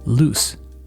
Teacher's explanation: This S sound is unvoiced. We only need our mouths to make this sound, not our voice.